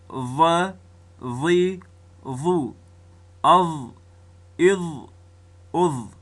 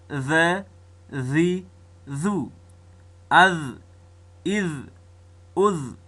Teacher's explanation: ثنایه علیا یعنی د پورته دوو غشو د لوړو دوو غشو د سرو سره چې رأس اللسان ومښلیږي، دلته ضا، ذال او ثا ادا کیږي